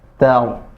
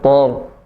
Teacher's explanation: Tar, ya. Ta tipis tar. Tidak boleh tor. Karena mentang-mentang tebal, jadi diikutkan tebal. Salah.